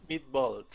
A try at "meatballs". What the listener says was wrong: Good. One more time.